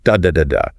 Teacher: Each syllable gets roughly equal weight and duration. It doesn't matter if it's a long complex syllable or a short simple one. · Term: syllable timed language